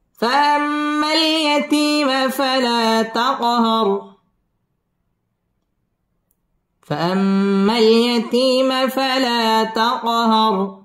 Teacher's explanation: ফালা তাক কলকলা ধাক্কা দিয়ে পড়তে হবে। তাকহার র পুর হবে এবং রয়ের মধ্যে ওয়াকফ করতে হবে।